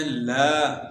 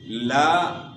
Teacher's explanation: تو اس کو یہاں ہم نے پڑھنا ہے لا، تھوڑا کھینچنا ہے، کیوں؟ لام کے بعد الف ہے، تو یہاں الف مدہ ہونے کی وجہ سے جو ہے 1 الف کی مقدار کے برابر ہم نے اس کو کھینچنا ہے۔ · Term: مد اصلی